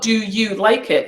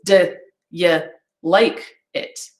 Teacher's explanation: i'm going to use the weak vowel sound our friend the schwa